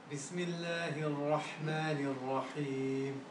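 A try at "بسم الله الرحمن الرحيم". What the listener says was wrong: That's better, but look, you got to fill the room. Bismillahirrahmanirrahim. Fill the room up.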